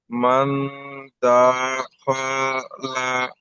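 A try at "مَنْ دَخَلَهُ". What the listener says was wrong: দা টানাবে না, দা খ সব টানানো হয়ে যাচ্ছে। মান দাখালা। এখানে মান, এটা গুণনা হবে। মান দাখালাহু, এখানে গুণনাটা কেন হবে? ইকফার, এটা তো আমরা আজকে ইকফার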